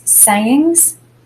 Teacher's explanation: in sayings the first syllable say is the one we accent